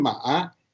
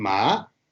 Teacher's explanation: in this first case it is falling down and rising in the second case it is going from bottom to the top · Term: second tone